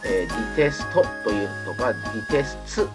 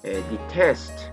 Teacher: なので、ディテストというとかディテスツというふうに、 ウの母音が、母音のウがですね、割り込まないようにしましょう